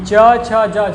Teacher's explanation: इनके उच्चारण में स्पर्श वर्णों के या स्पर्शी वर्णों की अपेक्षा ज़्यादा घर्षण होता है आपके मुख के अंदर। ठीक है, जब ज़्यादा घर्षण होगा तो ज़्यादा ऊर्जा की आवश्यकता होगी, ज़्यादा वायु लगाई जाएगी, इसलिए इसे क्या कहा जाता है, स्पर्श संघर्षी।